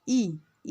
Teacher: ई में कोई भी वृत्त नहीं बनता है, तो ई अवृतमुखी स्वर है।